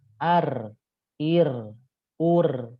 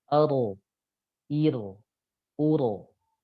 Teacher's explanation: Kalau pakai huruf ro, itu makhraj huruf ro, suara jadi lebih tebal dibanding huruf R dan getarannya lebih sedikit dibandingkan getar huruf R.